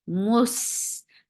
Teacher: Mus, for dhamma, circle your lips. As soon you will touch seen, you will give rakhawa, you will give safir, and you will make it light.